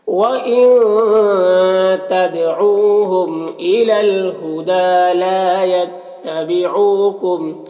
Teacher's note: لا میں الف مدہ ہے، ایک الف کے برابر کھینچیں گے. یتبعوکم او میں واو مدہ ہے، ایک الف کے برابر کھینچیں گے